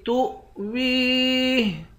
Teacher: تا کو حمزے کے ساتھ ملا کر حمزے پر جھٹکا دیں گے، پاؤ کو یا کے ساتھ ملا کر یا کو ایک الف کی مقدار کھینچیں گے، آخر میں ہاں ساکن ہے۔